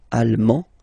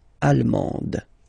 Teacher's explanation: you don't pronounce the final D, but then you pronounce it here for the feminine form